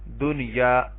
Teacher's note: نون ساکن کے بعد یا ہے لیکن ہم نے یہاں پہ اظہار کرنا ہے. دیکھیں دنیا، یہاں پہ ہم ادغام نہیں کر سکتے.